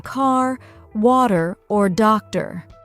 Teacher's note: the R sounds. They're much stronger and more pronounced in American English